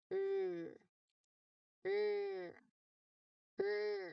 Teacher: Keep your lips either neutral or slightly rounded. Your throat must vibrate here for the sound as it is a voiced sound.